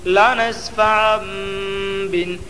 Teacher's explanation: دو زبر کی تنوین کو میم سے بدل کر غنہ اور اخفا کے ساتھ پڑھیں گے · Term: اقلاب